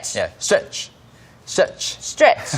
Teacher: 그렇지만 우리말로는 스트레칭인데 영어로는 거의 한 음절이에요